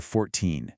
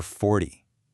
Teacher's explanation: It's 14, where you stress the end, versus 40, where you stress the beginning.